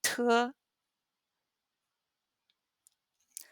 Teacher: T has a little bit more air. It's aspirated.